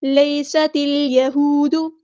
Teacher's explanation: یا لین آئی تو نرمی سے موڑیں گے، سین کی سیٹی ہم واضح کریں گے